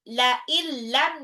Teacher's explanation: Kalla, lamnya 2 harokat mataba'i, la illam, nun sukun ketemu lam langsung dilebur ya, idgham bil gunnah.